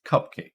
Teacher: it's cupcake stress on the first syllable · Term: primary stress